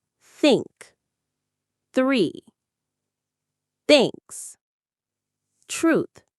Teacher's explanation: The key is to put your tongue between your front teeth just a little bit. >> For the unvoiced th like in think, the sound comes from air, not your voice box.